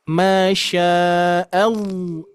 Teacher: Menyimpang dari makhraj lam ke ro. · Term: inhirab